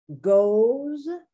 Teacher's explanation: the S is pronounced more like a Z rather than an S